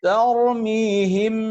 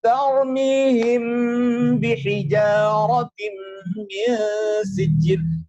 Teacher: Makhrajnya huruf mim lisyafatainil waw ba'un mimu. Yaitu ada di kedua bibir yang tertutup. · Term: ikhfa syafawi